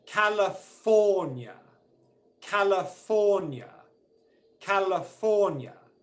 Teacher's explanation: the primary stress the main stress in the word is on fall the third syllable